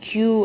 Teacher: யூ front வந்து யூ அப்படிங்கும்போது ஹார்ட் பேலட் கிட்ட நியராக போகுது. ஆனால் அதில் ஃப்ரிக்ஷன்லாம் எதுவுமே இல்லைல்ல, ஏர் அப்படியே எஸ்கேப் ஆகிடுது. வைட் கேப் இருக்குது. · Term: பலாட்டல்